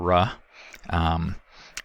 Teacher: best defined by its distinctive acoustic result which is that the third resonance frequency or third formant of this sound is very low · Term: rhodic sound